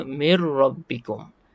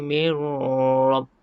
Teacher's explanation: Hukumnya idgham bila gunnah. Mengidghamkan nun tadi dengan huruf ra tanpa dengung. Maka kita baca min tu jadi mir.